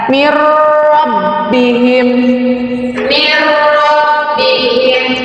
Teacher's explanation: Di sini nun mati bertemu dengan huruf idgham bila gunah, yaitu huruf ro, maka dibacanya ditegaskan.